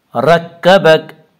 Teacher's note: رکبک کے را کو پر پڑھا جائے گا